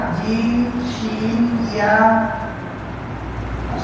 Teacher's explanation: জিহ্বার মধ্যখান হইতে তারপর তালুর সঙ্গে লাগাইয়া